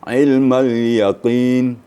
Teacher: tetap makhraj hurufnya pada huruf qaf di pangkal lidah. Mentang-mentang dia huruf qaf di akhir kemudian baris di bawah, kita keliru ya.